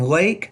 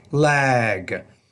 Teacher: make that second sound that second word a little bit longer the g is a voiced consonant and it tends to make the vowel before it a little bit longer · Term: voice consonant